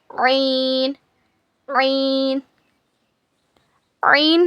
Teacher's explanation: हलक के बीच के हिस्से से ऐन अदा होता है. It is pronounced from the middle part of your throat.